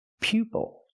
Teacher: Use the long U sound like you, pupil.